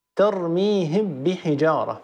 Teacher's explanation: لو أدغمنا لقلنا ترميهم بحجارة، فالميم دخلت بكلها في الباء التي بعدها وتحولت إلى الباء، تحولت إلى حرف واحد مشدد من جنس الحرف الثاني وهو الباء، يرتفع عنهما المخرج ارتفاعة واحدة، هذا هو الإدغام.